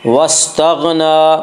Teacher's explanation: मम बखिला वस्तगना, गैन को भी पुर पढ़ेंगे, गैन हरूफ मुस्तालिया में से है। वस्तगना, नून के ऊपर खड़ा ज़बर है, खड़ा ज़बर को एक अलिफ के बराबर खींच कर पढ़ेंगे।